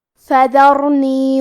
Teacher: کلمت فذرنی میں یہاں ہمیں حرف الراء کو موٹی آواز میں پڑھنا ہے